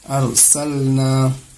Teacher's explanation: رائے ساکنہ سے پہلے زبر آ رہا ہے تو اس راہ کو پر کر کے موٹی آواز کے ساتھ پڑھیں گے۔ ارسلنا قرآن، قاف را پشکر ہے، رائے ساکنہ سے پہلے پیش آ رہا ہے، اس کو بھی موٹی کریں گے۔